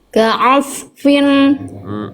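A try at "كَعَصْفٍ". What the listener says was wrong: Tapi jangan putus bunyi sodnya. Tebalnya bagus. Ya, Masya Allah. Cuma jangan ka'asfin. Nah, bunyi asnya jangan putus.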